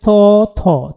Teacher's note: অঘোষ এবং মহাপ্রাণ হচ্ছে হল থ। · দ্বিতীয় বর্ণ হওয়ার জন্য এটা হচ্ছে অঘোষ হবে এবং মহাপ্রাণ হবে। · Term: মহাপ্রাণ অঘোষ ধ্বনি